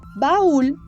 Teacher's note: En la palabra baúl hay un hiato acentuado, porque la U, que es una vocal cerrada, está acentuada